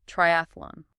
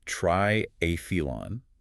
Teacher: It's pronounced triilon with the stress on the second syllable. This maintains the clarity of the Greek root try meaning three and a meaning contest.